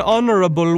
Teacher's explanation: in the word honorable, the H is not pronounced.